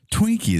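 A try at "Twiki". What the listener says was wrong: Twinkie. No N. Twinkie.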